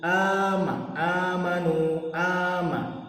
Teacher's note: Selanjutnya yaitu ama, amanu, ama, mad badal, karena terdapat huruf alif yang berharokat panjang. Cara membacanya panjang selama 2 harokat.